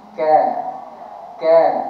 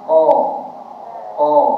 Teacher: Ka tu dia ada apa? Hamas. Jadi ada angin.